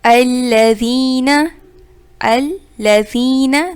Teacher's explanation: الذین دال کو نرمی سے ادا کریں گے، زین یائے مدہ ایک الف کی مقدار کھینچیں گے